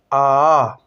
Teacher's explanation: वे स्वर जिनके उच्चारण में मुख पूरा खुला रहता है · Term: विवृत स्वर